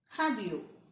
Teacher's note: so have you as a rising intonation